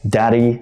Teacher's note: I mean the second D it doesn't have any stress daddy so it's more of a flap d right daddy so you just flap in the tip of your tongue